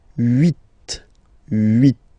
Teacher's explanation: this H letter here, okay, doesn't exist phonetically, so we don't really pronounce it, okay, so if you listen carefully, you will only listen or hear these vowels at the beginning of the word.